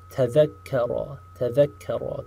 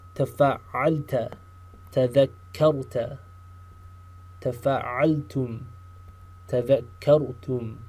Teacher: Again, pay attention to the ta, the sound of the ta in the very front, and the sound of the shadda, right? That small delay in the pronunciation of the word, that tells you there's a shadda.